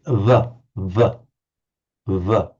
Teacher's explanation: When we pronounce in English v, we have the lower lip against the upper teeth. V, v, v. In the Ganges Valley, it's pronounced with the lips slightly together.